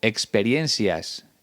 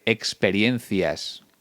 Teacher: En cuanto a los rasgos más destacados, aquí sobre todo encontramos uno, el seseo.